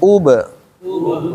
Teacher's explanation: Ub. Lihat, ub itu bunyinya, caranya u monyong, baknya nggak monyong. Jangan ub, tapi ub.